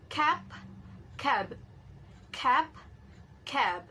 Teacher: But both of them are same in place of articulation and manner of articulation, which is bilabial plosive. So bilabial plosive is sound using upper lips and lower lips, and both of lips are held tightly enough to block the passage of air